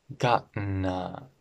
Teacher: These T's disappear and there's a glottal stop.